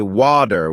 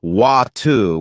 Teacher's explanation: In American English, people might say water with a D sound, while in British English it's often watu with a T sound.